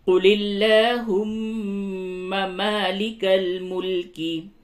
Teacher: میم مشدد ہے، یہاں پہ غنہ کیجئے